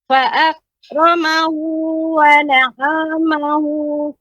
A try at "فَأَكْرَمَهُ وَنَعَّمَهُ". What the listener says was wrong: tasydid Ibu pada huruf ain.